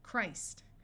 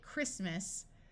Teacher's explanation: when we go from Christ to talking about the holiday, Christmas, the T sound disappears and the I becomes short.